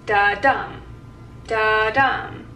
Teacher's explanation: And that's unstressed and stressed. And so an iamb sounds like da-dum, da-dum. And the dum is the stressed half of the foot.